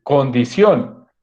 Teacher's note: es una palabra aguda, o sea, el acento está en la última sílaba y termina en N.